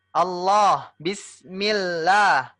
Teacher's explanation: lahnya ini panjangnya dua harakat ibu ya dua harakat